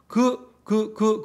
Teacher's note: 부 발음해보면 입술이죠. 그 다음에 드 잇몸이죠. 그 하면 여린 입천장이죠. 그죠? 일단 이 세 가지를 외우는 수밖에 없어요. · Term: 파열음